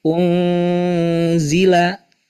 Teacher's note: kita membaca nun mati menghadapi zai itu harus tipis. Tarik bibir kita. Ungzila, tarkik ya.